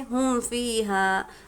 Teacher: میم کو ہم کو ظاہر کر کے بلا غنہ کے جلد پڑھنا ہے۔ جیسے کہ دیکھیں ہم فیہا، ابھی یہاں پر میم ساکن ہے، میم ساکن کے بعد کیا ہے؟ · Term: اظہار شفوی